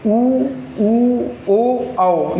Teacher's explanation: वृत्तमुखी होते हैं जिन्हें बोलने में होंठ पूरी तरह गोल हो जाते हैं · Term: वृत्तमुखी स्वर